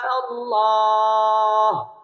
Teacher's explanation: আল্লাহ শব্দের লাম পুর হবে এবং লাম খারা জবর ল, এক আলিফ টেনে পড়তে হবে।